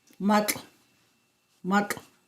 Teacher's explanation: It is the ejective lateral affricate and it's the initial sound in the word for salt.